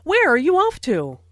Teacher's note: Notice the falling intonation since this is an information question, not a yes-no question.